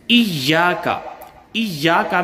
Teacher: ایاک میں یا پر تشدید ہے، اور 2 مرتبہ یا کو پڑھا جائے گا، تھوڑا سا روک کر سختی سے پڑھا جائے گا